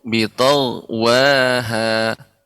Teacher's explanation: kurang tebal ya, karena gha juga di antara huruf isti'la